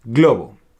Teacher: Vamos a ver hoy la combinación de la letra GL. Suave, no es GLE, es GL.